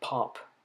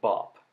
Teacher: The sound at the beginning of pop is the voiceless version of the sound at the beginning of bop.